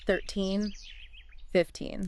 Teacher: For the teen numbers, we push hard on the end.